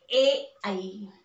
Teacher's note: कंठातून निघले आणि जिभेचा स्पर्श टाळूला झालाय, म्हणून यांना म्हटलंय कंठ तालव्य.